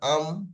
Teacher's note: মিমের মাখরাজ দুই ঠোঁটের শুকনো অংশ মিলিত হয়ে উচ্চারণ হয় মিম